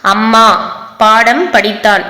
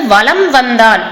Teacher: ஒலிக்கிறது அதே வந்து வளம் வந்தான் வளம் அப்படின்னுட்டு வருமொழியில வகர எழுத்துக்கள் வந்ததுன்னா அந்த மகர மெய்யெழுத்தானது அதனுடைய மாத்திரை அளவிலிருந்து குறைந்து கால் மாத்திரை அளவுக்கு ஒலிக்குது அப்படின்றதை சொல்றாங்க சோ வளம் என்றது நிலைமொழி நிலைமொழியில கடைசி எழுத்து ம் வந்திருக்கு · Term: மகர குறுக்கம்